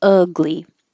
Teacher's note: the uh is the tongue is low in the middle and it's pulled back a little bit